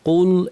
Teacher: কুল কফ ভারী, লাম পাতলা